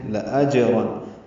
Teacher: لَأَجْرًا لام جلدی سے ادا کرنا ہے, اس لام کو لمبا نہیں کرنا. اج میں جیم ساکن پہ قلقلہ ہے, را پر پڑھیں گے.